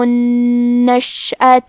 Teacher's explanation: نون پہ تشدید ہے، لہذا 2 حرف کے برابر حرف النون کو پڑھنا ہے۔ آخری میں تا پہ زبر ہے تو ہم زبر کو ظاہر کریں گے۔